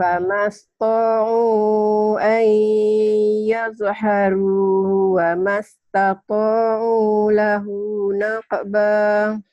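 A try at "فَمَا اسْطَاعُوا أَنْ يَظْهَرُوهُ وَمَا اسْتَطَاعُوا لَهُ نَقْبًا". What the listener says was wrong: Masih hanya kurang nampak ya H gedenya nih. Zonnya jangan dikokolan.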